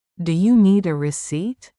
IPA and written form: duː juː niːd ə rɪˈsiːt (Do you need a receipt?)